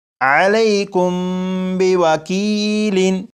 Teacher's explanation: میم ساکن کے بعد یہاں پر با ہے، جب میم ساکن کے بعد با آ جائے تو میم ساکن میں غنہ کر کے پڑھیں گے